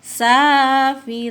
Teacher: Mad arid lisukun ya, lebih panjang, 3 harokat